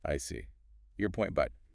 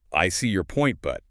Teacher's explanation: listen to the intonation. It kind of goes down in the end of the first part.